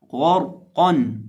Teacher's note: زبر ہے، تو را ساکن کو موٹا پڑھیں گے، غرقن، غرقن۔ غین کو بھی، را کو بھی اور قاف کو بھی، تینوں کو موٹا کر کے پڑھیں گے، یعنی اس لفظ کے اندر تمام حروف موٹے پڑھے جائیں گے۔